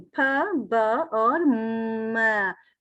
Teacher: आपके होंठ आपस में जुड़ रहे हैं, और आपकी जो एयर स्ट्रीम आ रही है ब्लॉक भी हो रही है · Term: बाइलेबियल